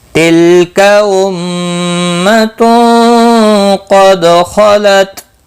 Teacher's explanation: قاف مستعلیہ ہے، پر پڑا جائے گا. خا بھی مستعلیہ ہے، پر پڑا جائے گا. تا وقف کی صورت میں تا ساکن ہی رہے گا، ملانے کی صورت میں بھی تا ساکن ہی رہے گا.